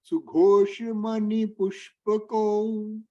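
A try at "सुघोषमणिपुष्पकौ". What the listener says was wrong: Mani, then Nakara, why it is not coming? Not money. Money.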